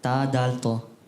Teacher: जबान का सिरा और ऊपर के दांतों की जड़ों से।